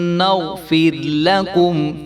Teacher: بعض لوگ جو ہے وہ را کو باریک کرنے کے چکر میں فر کر دیتے ہیں، تو یہ جو تکرار ہے یہ بھی پیدا نہیں ہونا چاہیے. سجدا وقولوا حطة نغفر لكم فر لكم، تو اس کو فر لکم بھی نہیں کریں گے، لام کے اوپر زبر ہے تو اس کو بھی ہم نے لمبا نہیں ہونے دینا.